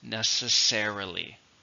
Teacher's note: it's an adverb and it has five syllables stress in the first